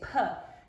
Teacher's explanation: So a voice sound means when you hold your fingers to your vocal cords, and when you say that sound, they vibrate, B, yeah? And P is your aspirated P sound, which means that a puff of air comes out. So if you hold your hand in front of your mouth and you say P, you should feel a puff of air.